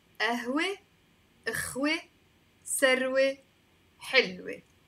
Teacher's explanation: words finishing with the waw right before the T marbuta, you have to pronounce them as an E.